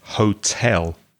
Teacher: the stress is on the second syllable not the first